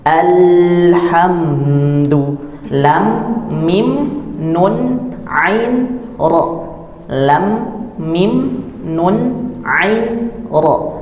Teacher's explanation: lam itu sudah sepantasnya memiliki sifat bainiyah atau mengalir dalam bunyinya